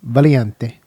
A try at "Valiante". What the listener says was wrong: Does it say how you pronounce it like that? You're saying ch instead of k.